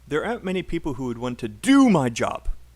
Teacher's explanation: do is not stressed it's a function word